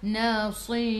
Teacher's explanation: Sebelum ra ada ya, kena baca dengan nipis. Nasir. Bila nipis kita kena senyum.